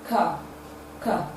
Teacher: flowing from the vocal cord and it is a voiceless sound it is produced when the back of the tongue is raised to the vellum or the soft palate it is therefore a voiceless velar plosive sound it is spelled · this sound is produced with partial obstruction of air flowing from the vocal cord and it is a voiceless sound it is produced when the back of the tongue is raised